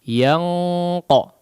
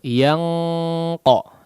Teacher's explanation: bunyinya gunnah yang terdapat pada ikhfa di sini ditebalkan ya, karena setelahnya adalah salah satu daripada huruf isti'la. Kemudian memang bunyinya langsung ang ya.